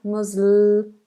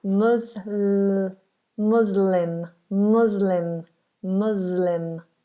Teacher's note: But just knowing that that S is a Z, mus, voiced S, Muslim, and the L, lots of people struggle with this dark L sound, Musl, make sure you get the tongue up onto the roof of the mouth. Muslim, Muslim, Muslim.